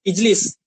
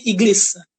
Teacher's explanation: Ada yang seperti di Mesir ya, ada yang jim, dibacanya ga